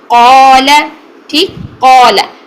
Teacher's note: हमने एंड तक अलिफ भी मोटा ही रखना है, हमने इसको बारीक नहीं करना। कौला नहीं करना, काला नहीं करना, क्या करना है, कौला, कौला, कोला ना हो आपका, को वाव की साउंड आ रही है, होंठ गोल नहीं होने चाहिए।